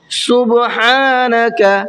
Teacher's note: ہا کو کھینچ کر کے پڑھنا ہے اور حلق سے نکالنا ہے